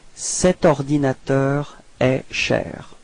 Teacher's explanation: no pause, no break between the set and ordinateur